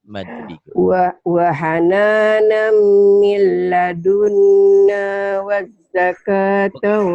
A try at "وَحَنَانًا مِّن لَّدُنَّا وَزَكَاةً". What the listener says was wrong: Kalau wazaka ada tasid, nggak ada tasid. Wazaka datar. Bukan wazaka. Kalau wazaka ada sidah, ada pendobel. Datar aja. Wahana min ladunna wazaka bukan wazaka ya. Kalau wazaka ada pendobel di sini. Nggak ada.